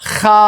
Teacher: Edhe haja nëse vjen me këtë shenjën tërheqëse sipër saj tregon se zgjatet dy kohë dhe lexohet me a sigurisht. Pra e lexojmë ha.